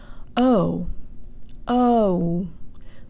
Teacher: The English O actually closes to an U sound.